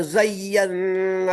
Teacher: نون میں غنہ ہوگا کیونکہ نون مشدد ہے، اور زیہ میں جو ہے نبر ہوگا.